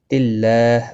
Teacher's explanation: اللہ کا لام زیر کی وجہ سے باریک پڑھا جائے گا، اس کے اوپر کھڑی زبر بھی ہے، ایک الف کے برابر کھینچ کر پڑھیں گے۔